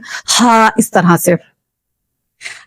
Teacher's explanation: दरमियानी हिस्से से अदा होता है, मतलब जो ये हा है हलक का जो दरमियानी हिस्सा है, यहाँ से हा अदा होगा